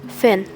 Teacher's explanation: received pronunciation minimal pairs such as thin and fin are homophones for many Cockney speakers, both being pronounced fin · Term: fronting